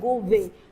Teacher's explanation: जो a का sound होता है वो कहीं ना कहीं मिस हो जाता है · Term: elision